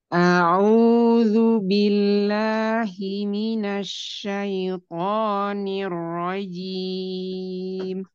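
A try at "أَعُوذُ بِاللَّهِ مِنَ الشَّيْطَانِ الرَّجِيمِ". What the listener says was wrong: Ainnya, disebutkan. Ya. Ainnya disebutkan. A'u di sini. A'udzu billah, sebutkan tipis dia.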